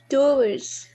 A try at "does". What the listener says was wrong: So here it's not do. Okay. It's does.